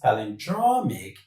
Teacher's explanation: So from the end of the word, we have draw. So the stress falls on draw. · the stress of that word should fall on the penultimate syllable. The penultimate syllable is the second syllable from the end of the word.